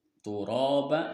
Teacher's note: Huruf ro-nya di sini itu ditebalkan atau ditafhim. Dan ada mad asli turaba, ada alif yang disukun didahului dengan harokat fathah, maka panjangnya 2 harokat.